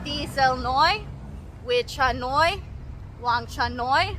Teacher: anytime someone has Noy in their name this means little and it kind of is high at the end